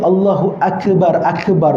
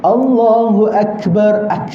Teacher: sifat pada Kaf itu adalah bunyinya seperti bunyi pancit tayar tapi masih lagi ada Paku dalam